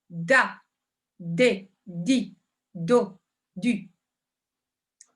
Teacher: de la mâchoire d'accord et du coup je vais pouvoir avoir des consonnes qui sont beaucoup plus pétantes avec beaucoup plus d'énergie dedans et automatiquement alors ça va vous faire ralentir le rythme mais